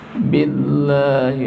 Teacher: Allah dibaca tipis karena berbaris kasrah sebelum lafaz Allah.